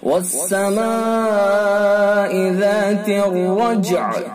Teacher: الف حرف مدہ کے بعد حمزہ اسی لفظ میں، لہذا اس کے اندر کیا ہوگا؟ مد متصل